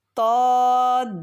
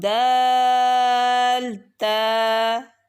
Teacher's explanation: اب طا موٹا ادا کرنا ہے، دال اور تا باریک رکھنا ہے آپ نے